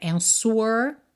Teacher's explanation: a gente não pronuncia esse w mesmo com som de u, né? Answer, tá?